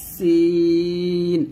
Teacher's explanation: সিন যখন উচ্চারণ করবেন জিহ্বাটা নিচে দাঁতের মাঝে লাগাবেন, এটা পাতলা উচ্চারণ করবেন